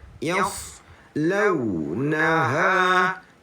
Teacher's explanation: Lupa nak berkata sa ni ada sifat isti'alah, huruf yang tebal, angkat pangkal lidah. Yaslaunaha.